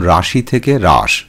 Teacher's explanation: শব্দের শেষে হ্রস্ব ই স্বরধ্বনিটি লোপ পেয়েছে, তাই একে অন্তঃস্বরলোপের উদাহরণ বলা যেতে পারে।